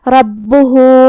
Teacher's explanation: آخری میں ہا پہ الٹا پیش ہے. یہاں مد صلہ صغرا ہے تو ہم اپنی آواز دو مد کے برابر لمبی کریں گے